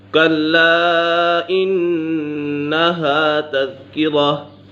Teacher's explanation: نون مشدد ہے، نون مشدد میں ہمیشہ غنہ ہوتا ہے۔